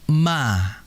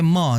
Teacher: Mim ini merupakan huruf yang tipis. Huruf tipis dikala berharakat fathah, maka vokal yang ada itu a sehingga dibaca ma.